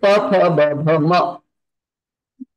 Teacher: U plus pa pha ba bha ma are known as Oshthaja. Their Uchcharan sthanam is Oshtha.